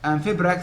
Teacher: Amphibrach, meaning weak, strong, weak.